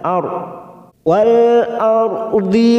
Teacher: ra sukun yang didahului fathah kita baca tafkim atau tebal